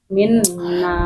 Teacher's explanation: Minna itu jangan minna. Kalau dibaca mina berarti nun musyadahnya hilang.